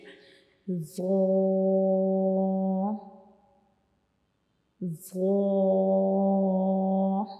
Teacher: ہماری زبان کی نوک کا اوپر والا حصہ جو ہے یہ ہمارے اوپر والے سامنے والے جو 2 دانت ہوتے ہیں ان کے کناروں کو ٹچ کرے گا ، ٹھیک ہے، ان کی کناروں سے جا ملے گا، تو